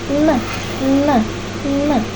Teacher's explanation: Diucapkan dengan posisi ujung lidah bagian tengah menempel pada gusi atas sehingga menutup. Aliran udara akan melewati rongga hidung dan menghasilkan bunyi nasal. N, N, N. Saat itu glotis dalam keadaan menyempit dan bunyi dialirkan dengan menggetarkan pita suara.